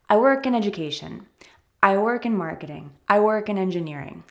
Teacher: that's a little easier and totally fine i work in engineering i don't need to stress that preposition in